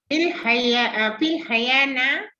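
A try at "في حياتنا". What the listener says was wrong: Hayah tu kan ta ujung dia.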